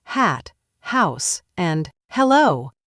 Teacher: This one is interesting because, unlike in Portuguese where H is silent, in English, H is always pronounced. It's aspirated, which means you give a little puff of air when you say it.